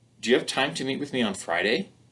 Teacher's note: we use a rising intonation pattern often in English when we want to show doubt or surprise or in this case when it's a yes/no question · that last syllable, we get a rising pattern.